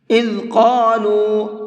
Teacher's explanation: قاف کو پر کر کے پڑھیں گے، منہ بھر کے پڑھیں گے۔